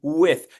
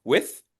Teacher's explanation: We're lengthening the sound so that the air has a chance to go all the way through our tongue and our roof of our mouth. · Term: TH sound